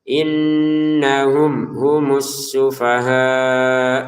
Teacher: mim sukun bertemu ha kita baca dengan jelas